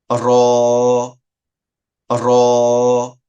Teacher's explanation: জিহ্বার পিঠ তার বরাবর ওপরে তালুকে স্পর্শ করে উচ্চারণ করা হয় র উচ্চারণ গুলোকে ভালোভাবে খেয়াল করবেন 11 নাম্বার মাখরাজ জিহ্বার আগা